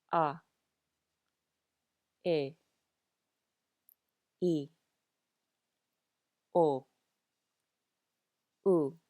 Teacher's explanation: these are very pure sounds to the vowels with no diphthongs or gliding